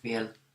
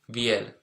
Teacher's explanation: in spoken language you can hear it without the A with two dots